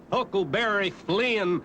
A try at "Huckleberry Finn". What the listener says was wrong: Finn! Finn! He was Huckleberry Finn, not Flynn. Ain't it the decent thing to pronounce the poor dead loafer's name right?